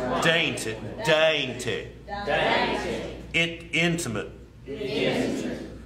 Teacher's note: the T is often dropped as we talked after an N, after a nasal.